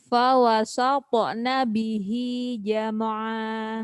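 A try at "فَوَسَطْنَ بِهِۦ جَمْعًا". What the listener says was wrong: Nah, jangan sampai jam'a. Itu karena tak terasa gitu itu. Jam'a namanya tawallud. Fawasatna bihi jam'a. masih ada jamaah, masih gitu. Nah, nggak terasa gitu tuh. Itu kesalahan yang kalau tidak ada yang mengingatkan tidak terasa.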